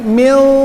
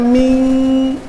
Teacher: Tapi kalau mil, dimasukin lagi ke hidung, lebih dimasukkan lagi suaranya.